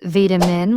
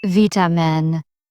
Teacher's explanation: You sometimes pronounce vitamin with a long I, but in British English it's vitamin. Shortening the vowel makes the word sharper, almost clipped in tone. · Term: short I